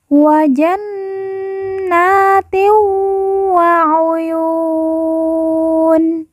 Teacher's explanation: Nun yang bertasydid langsung ditekan, ditahan 2 harokat dan didengungkan. Kemudian na kita baca panjang 2 harokat karena di atasnya terdapat alif kecil